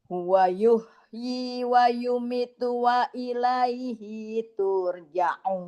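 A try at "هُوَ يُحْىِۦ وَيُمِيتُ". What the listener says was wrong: Wa yumitu mi ada tabi'i. Wa yumitu. Huwa yuh. Wawunya enggak panjang. Huwa yuhyi. Taknya enggak panjang, hinya enggak panjang.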